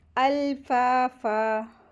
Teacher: फ़ा के साथ अलिफ मद्दा आइए, दो हरकत खींचेंगे और यहाँ पे सुकून होने की वजह से मद्दे आरिज़ वक्फ़ी होगा, तो फ़न की जगह फ़ा पढ़ेंगे, यानी कि अल्फाफा पढ़ रहे हैं ना, अल्फाफन तो नहीं पढ़ेंगे हम, ठीक है।